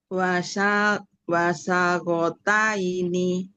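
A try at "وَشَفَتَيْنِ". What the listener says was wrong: Ini huruf fa Bunda.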